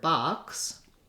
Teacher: the word box that actually sounds like an ah and a k and an s